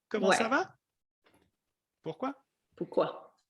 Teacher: in French, the voice goes up when you ask a question.